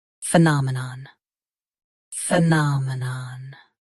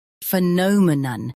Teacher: US has na. UK has no. Watch the middle sound.